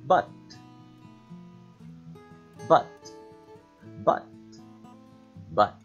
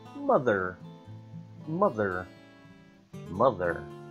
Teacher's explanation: To produce the up sound, the lips are not rounded. It's almost just a throat sound. We don't say ah. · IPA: /ʌ/